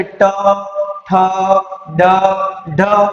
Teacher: તો એનું ઉચ્ચારણ કરતી વખતે જે વાયુ છે એ તમારી મૂર્ધા એટલે કે તાળવા પછીનો જે ભાગ છે ત્યાં સ્પર્શ કરશે અને તમારી જીભ છે એ એનું ઉચ્ચારણ કરતી વખતે મૂર્ધા તરફ વળશે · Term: મૂર્ધન્ય વર્ણ